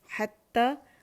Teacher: ہی کی آواز نیچے جائے گی، یا کی آواز اوپر جائے گی